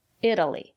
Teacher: The syllable after the letter T is not stressed. We pronounce the letter T as a fast D.